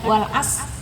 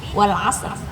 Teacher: Kita harus sadar sendiri bahwa kita menyebutkan ro-nya, jangan meniadakan ro-nya. Bukan wal as, tidak, tapi wal asr.